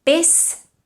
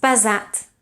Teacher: Pes is pronounced with an S, whereas pesat is pronounced with a Z.